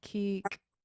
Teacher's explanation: It's K, high tone EE, and then pinched K.